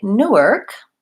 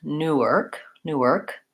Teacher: when I say Newark I have first syllable stress